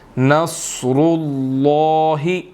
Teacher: صاد، را اور لفظ اللہ، ان تینوں کو موٹا پڑھا جائے گا۔ ٹھیک ہے، صاد ویسے ہی موٹے حروفوں میں سے ہے، را کے اوپر پیش ہے اس لیے موٹا پڑھیں گے، اور لفظ اللہ سے پہلے بھی پیش ہے تو اس لیے ان تینوں کو موٹا پڑھا جائے گا۔